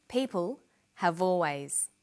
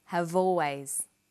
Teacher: Notice how in conversation we link the final consonant sound v with the initial vowel sound